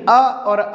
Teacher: अ और आ कहाँ से उच्चारित किए जाते हैं, तो कंठ के माध्यम से उच्चारित होते हैं